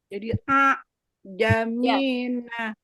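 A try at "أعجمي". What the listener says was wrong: Kalau begitu itu hanya ada satu harokat. Ini kan dia ada dua harokat. Kayak diseret.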